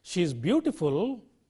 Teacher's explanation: a falling rising tone conveys implied meaning a reservation of statement made by the speaker